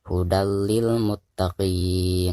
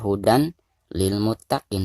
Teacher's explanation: bilagunnah dan cara membaca tanwin yang di atas dari ini itu harus dimasukkan ke huruf lam yang ada di depannya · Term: idgham bilagunnah